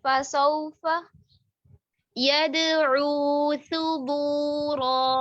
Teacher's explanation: तीनों फतहा जो है ना, इनका टाइम बिल्कुल बराबर होगा। फसौफा नहीं पढ़ेंगे, फा को मत करके अदा नहीं करेंगे।